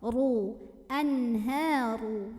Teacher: ra-nya ditebalkan dengan cara mengangkat pangkal lidah kita tanpa mengubah posisi makhraj dari huruf ra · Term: tafkhim